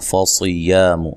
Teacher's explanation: فصیام، صاد کو موٹا ادا کرنا ہے، یا الف مدہ ہے. اچھا، میم کو لمبا نہیں کرنا.